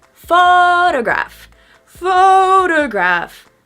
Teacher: And the second interesting point for this word is the stress. We stress the first syllable.